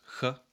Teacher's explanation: It is pronounced without voice, ch, at the beginning as well as the end of a word. and with voice between vowels, similarly to the S sound.